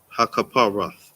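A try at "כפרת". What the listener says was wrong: Good job. See?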